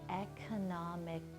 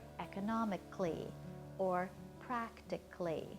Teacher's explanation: Now again, you might think the word would be pronounced economically, but it's not. We kind of squish that last couple of syllables together to get a kind of clee sound. So we say the word economically or practically.